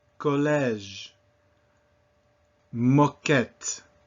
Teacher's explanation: The letter O has two primary sounds. If it's in an unstressed position, it is not O, but more O. A little bit more open